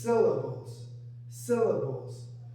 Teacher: The first syllable is stressed more than the second syllables.